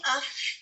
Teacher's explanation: اس میں ہوا جاری رہتی ہے. آپ کہہ کے بھی دیکھیں اف اور اپنی ہتھیلی کو آگے رکھیں اپنے ہاتھ پہ, آپ محسوس کریں گے ہوا کو.